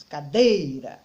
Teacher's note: Eu tenho pequenas sílabas que juntas formam a palavra cadeira. Ao pronunciar a palavra cadeira, eu percebo que quando eu chego na segunda sílaba, eu pronuncio com mais força do que as outras. Cadeira. Ela sai com mais força. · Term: sílaba tônica